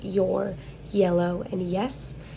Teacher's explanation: and that's a voiced palatal glide.